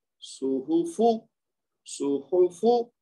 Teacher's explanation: تینوں حروف کے اوپر صرف دمہ ہے یعنی پیش ہے، تو لہذا تینوں کو 1 حرکت دیں گے او کی آواز کے ساتھ